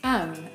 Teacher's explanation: he shortens the word them to just um especially because the word that precedes them is with so normally